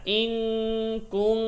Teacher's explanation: নুন সাকিনের পরে কাফ গুন্না